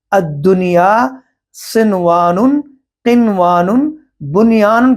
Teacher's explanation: قرآن مجید کے اندر یہ جو 4 الفاظ ہیں، الدنیا، صنوان، قنوان اور بنیان، یہاں ان 4 کلمات میں نون ساکن کے بعد حروف ادغام ہے، یعنی واو اور یا، تو ادغام ہونا چاہیے۔ الدنیا، صنوان، قنوان، بنیان کے نون ساکن میں اظہار ہوگا، ادغام نہیں ہوگا۔ نون ساکن درمیان کلمے میں ہو اور اس کے ساتھ، یعنی نون ساکن کے ساتھ واو ہو یا ہو، وہ ایک ہی کلمے میں ہو، بعد میں نہیں۔ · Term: اظہار مطلق